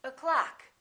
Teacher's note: the first syllable is reduced the second syllable is stressed